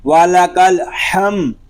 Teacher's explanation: میم ساکن ہے، اس میں غنہ نہیں کریں گے. وَلَكَ الْحَمْدُ، دال پیش دو، وَلَكَ الْحَمْدُ، اور وقف میں ہوگا ربنا وَلَكَ الْحَمْدُ۔